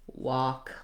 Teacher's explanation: The other tricky thing about walk is that L might affect how we say the vowel, but there really is no L sound. So I go right from the vowel to the K.